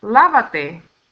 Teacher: It finishes in a vowel, and according to the first rule of stress, the stress is going to be in the next to the last syllable, lava. When we add the pronoun, the stress is going to still be carried in that la. So it doesn't matter how many pronouns we put, we're still going to go by the command itself, okay?